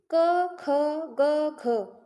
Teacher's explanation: क, ख, ग, घ मुंह के सबसे पिछले भाग से बोला जा रहा है। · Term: कंठ